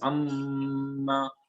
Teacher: this is an idgham between them, and that's why it is pronounced as amma, and then that's why it is that noon is dropped